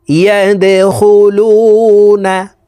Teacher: ওয়ারাআইতান নাস ইয়াদখুলুনা, এই দাল কলকলার হরফ নিচের দিকে ধাবিত করে ধাক্কা দিয়ে উচ্চারণ করতে হবে